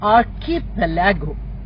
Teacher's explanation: where the stress is on pal, that is the syllable in the middle of the word